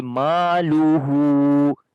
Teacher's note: meme we long due to alif madda, ha we long due to inward dhamma on it. So we say maluhu, and there is a mad sign as well, which we can say this is waw madda, like inward dhamma is equal to waw madda.